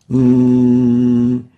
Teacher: And the second articulation is the nasal one, in the nasal passages, while the nun pronounced through the nasal articulation zone would sound like this.